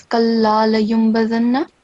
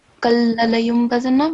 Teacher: we have lam mushaddad and then it's followed by alif. So it should be at least 2 seconds counts or beats.